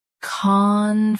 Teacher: Stress con. Keep flu soft then great clear.